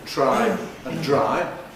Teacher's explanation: the /tr/ and /dr/ sequences we discussed in [tɹ̝̊aɪ] <try> and [dɹ̝aɪ] <dry> are also affricates phonetically in English